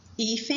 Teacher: Hífen é uma paroxítona, ela tem a penúltima sílaba forte e é terminada em N.